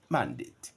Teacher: mandate as a noun and as a verb would be stressed on the first syllable, mandate. And there are many others like that.